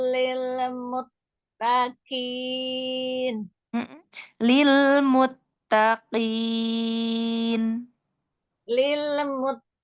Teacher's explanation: Qafnya itu memang dia di pangkal lidah ya, ketemu langit-langit lunak, tapi tidak di nah tidak terlalu dicungkil ya.